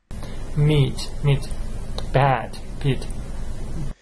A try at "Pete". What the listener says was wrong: No, that's not pat, Pete, Pete.